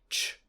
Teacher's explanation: Ch is a voiceless post-alveolar affricate,